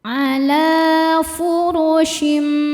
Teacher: Cara bacanya tanwin diganti bunyi mim sukun ya tadinya n jadi m. Kemudian dengungkan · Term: hukum iqlab